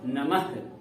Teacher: अब इसे हम ह के रूप में बोलेंगे। ह का उच्चारण करेंगे म के बाद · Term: विसर्ग